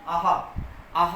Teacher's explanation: आहा वर्ण का उच्चारण हम कंठ से करते हैं